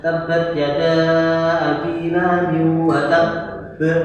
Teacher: ada yang menamakan akbar karena ada dua pantulan yang jadi satu, kemudian sampai mantulnya di belakang setelah hurufnya. Tab tidak boleh wa tabb karena ada dua mantul jadi satu, akhirnya agak ditahan mantul di belakangnya. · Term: qalqalah akbar